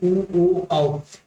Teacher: बोल के देखेंगे तो आपको होठ गोल हो रहा है सामने का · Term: वृत्तकार